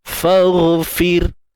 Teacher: Fagh tebal. Fir nipis.